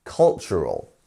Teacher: our stressed syllable is on the first one. So cultural, our stressed one's on the first.